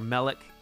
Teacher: the first syllable is accented, which is really unusual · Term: initial accent